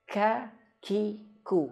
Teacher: huruf kaf dia dianginkan ketika dia berharokat